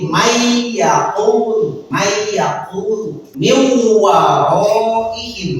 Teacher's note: jika ada nun mati menghadapi ya, maka huruf nunnya itu dimasukkan ke ya. Jadi seolah-olah tidak ada nun. · Jadi may yaqul min waraihim, itu yang dimaksud idgham. Jadi ada nun di tengahnya tapi dimasukkan ke waw, dimasukkan ke iya, atau dimasukkan ke mim lagi. Itu yang dimaksud idgham. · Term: idgam